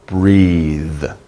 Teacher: When you make the TH sound at the end, breathe, your tongue is between your teeth. Breathe, and it's vibrating, right? You have a little vibration.